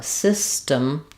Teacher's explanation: to pronounce system, we have first syllable stress. The letter Y says the I sound.